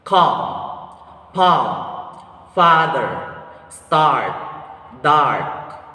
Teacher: The muscular tension of this vowel sound is lax. The tongue height is low. The tongue advancement of this vowel sound is central. Lip shape is unrounded.